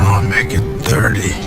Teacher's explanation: The T in it is a glottal T. 30, the T in 30 is pronounced as a flap T. A flap T occurs when it's surrounded by vowels or R's.